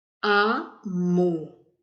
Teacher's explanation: Amor. Qual a sílaba mais forte? Mo. Então, é a última sílaba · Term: oxítona